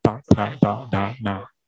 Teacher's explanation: 这个时候舌尖呢没有碰触到牙齿，它只是舌尖呢稍微后面的部分碰触上颚来发音 ，然后碰触过后就发音哒哒哒哒哒。这一行跟下面那行呢，它的发音相似，但是呢只是不同的地方。哒哒，第三次哒哒哒哒哒。所以第三行哒哒哒哒哒呢，它的特点就是舌头舌尖后面一部分稍微顶着上颚发音。